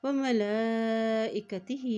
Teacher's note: कुल्लुन आमना बिल्लाही, कुल्लुन आमना बिल्लाही व मलाइकतिही। यहाँ देखिए लाम के ऊपर खड़ी ज़बर भी है और मद भी, इसलिए इसको लंबा अदा करेंगे